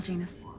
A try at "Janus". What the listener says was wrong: Yeah, you're mispronouncing that. He's Portuguese. The J's silent.